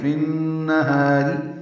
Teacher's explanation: ہا الف مدہ ہے، 2 حرکات لمبا کریں گے